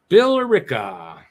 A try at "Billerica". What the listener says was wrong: No, there's no Erica. It's just Bill Rica.